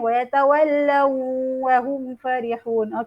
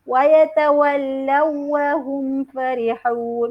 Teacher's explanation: Jadi pada waw yang bersabdu kita tak perlu dengung. Jadi kita masukkan saja pada huruf waw.